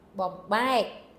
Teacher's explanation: Just remember, second syllable is the one that's accented.